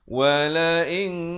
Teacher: ikhfa di sini dibacakan dengan tebal ya, kerana qaf berhuruf yang bersifat isti'la 2 harakat